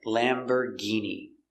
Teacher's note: Lamborghini, we see it's not or, it's Lamber, and the G makes a hard G sound.